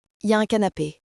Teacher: Mais attention à la prononciation rapide. Les Français disent souvent ya dans la conversation. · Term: l'élision de l'oral